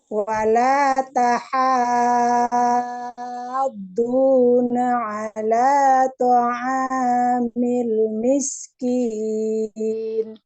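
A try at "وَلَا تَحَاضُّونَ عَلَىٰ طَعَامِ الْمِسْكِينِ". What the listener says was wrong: Oke, alhamdulillah.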